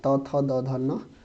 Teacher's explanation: दंत वर्ग, मतलब जिसका उच्चारण दांत से होता है, तो त का पूरा, त थ द ध न, इसके बाद स और ल, ये क्या है, ये दंत वर्ग है, आप याद रखिएगा।